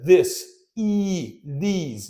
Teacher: in these we got the tense e sound